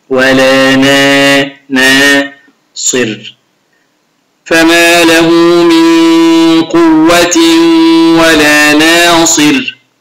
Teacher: النون ابتسامة، أي حرف مرقق، نا نا ما أقولش نا نا، أي حرف النون هنا حرف استفال، حرف مرقق، أبتسم عند قراءة حرف النون